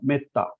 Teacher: तो को तो जोड़ा गया है और आ जोड़ा गया है, मतलब मेत्ता। तो ये ए के आगे डबल कंसोनेंट होने के कारण हमने उसका उच्चारण कैसा किया, एकदम शॉर्ट में किया, मेत्ता शॉर्ट में किया। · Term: ह्रस्व